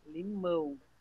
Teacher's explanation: Cão, pão, chão, sabão, então, né? A sílaba tônica é o final.